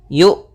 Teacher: Maka ketika melafalkan Hamzah itu yuk. Nah, tidak ada nafas yang dialirkan dan tidak ada pula suara yang dialirkan. Tapi dia suaranya tertahan dan nafasnya tertahan